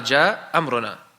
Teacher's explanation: He dropped that hamza at the end there. This is permissible. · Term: al-isqat